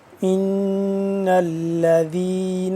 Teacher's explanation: ان الذین، ان نون ہے، نون مشدد ہے، اس پہ ہم کریں گے غنہ کریں گے